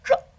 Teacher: it's like a J sound but with your tongue back bending back towards your tonsils it sounds like true oh look it's a hard sound no